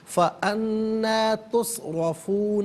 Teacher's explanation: रा पर ज़बर है तुस्रफून में, रा को पुर करके पढ़ेंगे